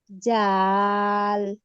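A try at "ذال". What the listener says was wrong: জাল না আপু, জাল মানে জালের উচ্চারণটা নরম হবে। এই যে জিহ্বার আগা সামনের উপরের দুই দাঁতের আগার সঙ্গে লাগাবো। হুম, জিহ্বার আগা সামনের উপরের দুই দাঁতের আগার সঙ্গে লাগাবো, এটা জাল এরকম উচ্চারণ হবে।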